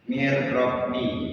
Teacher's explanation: Jadi bacanya mir robbi, seolah-olah nun matinya itu tidak kebaca, bacanya itu mir robbi. Jadi anggap aja nun matinya itu nggak ada, kita baca rohnya aja, tapi dengan berdengung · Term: idgham bilauna